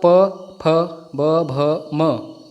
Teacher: जो आपके लिप्स हैं वो आपस में टच होके ध्वनि का निर्माण कर रहे हैं। और ये तो आपको पता ही है पंचमाक्षर जो है नासिका का इसमें इस्तेमाल होता है। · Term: ओष्ठ्य